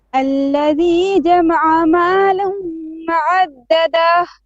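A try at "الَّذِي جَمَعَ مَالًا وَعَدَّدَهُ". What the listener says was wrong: Now you also you're also stretching the da. You're saying wa'addada da. No, wa'addada da.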